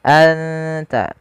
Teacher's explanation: Cara membacanya adalah suara nunnya disamarkan ke huruf ta. Anta san dan makhraj daripada huruf ta sendiri makhrajnya adalah ujung lidah kita. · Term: ikhfa